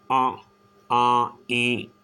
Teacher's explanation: मुंह और नाक को मिलाते हुए दोनों से हवा निकलती है। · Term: अनुनासिक